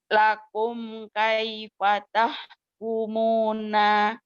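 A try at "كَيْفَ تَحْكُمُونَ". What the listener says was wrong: Nah-nya pendek.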